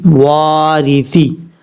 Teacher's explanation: اب یہاں پر وارثے نہیں پڑھنا، سا زیر سی، وارثی۔ را کے نیچے جب زیر ہو تو را بریک پڑھا جاتا ہے۔